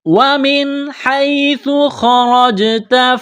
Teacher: سا کو پڑھتے وقت زبان تھوڑی سی باہر نکالیں گے